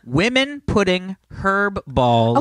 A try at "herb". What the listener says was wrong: Herb. Not herb. herb. But you said the H, which made it sound like you were saying her balls.